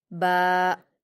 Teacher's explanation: با پر الف مدہ ہے تو اسے بھی 2 حرکات کھینچیں گے